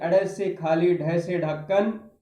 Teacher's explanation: जैसे ड से खाली ढ से ढक्कन व्यंजन का जो उच्चारण है वो जीभ की नोक से हम जल्दी से जो हमारा कठोर तालु है हमारा कठोर तालु है। हमारी जीभ की जो आगे की जो नोक है उससे टकराकर जल्दी से वापस आती है। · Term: उत्क्षिप्त